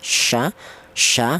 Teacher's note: keluarnya huruf berasal dari tengah lidah, sya ya, yang sifatnya tafashi.